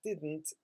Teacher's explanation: didn't is stressed on the first syllable